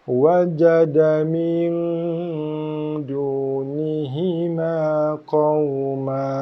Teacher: Nun mati jumpa dal dengung ikhfa' kita kat sini.